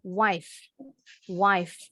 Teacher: gigi atas menempel ke bibir bawah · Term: bunyi f